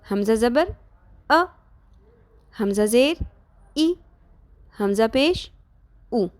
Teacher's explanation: جب زبر، زیر یا پیش لگ جائے گی تو وہ تھوڑی سی جھٹکے کی آواز آئے گی